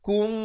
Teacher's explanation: Di sini mim mati bertemu mim. Idgham mislain saghir. Dibacakan dengan dengung 2 harakat.